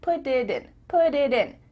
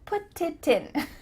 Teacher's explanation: your tongue is just tapping the top of your mouth to make a D